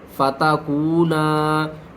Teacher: واو ساکن سے پہلے پیش ہے، حروف مدہ ہے، اس کو ہم نے 1 الف کے برابر کھینچ کر پڑھنا ہے۔